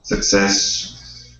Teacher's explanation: success with the accent at the end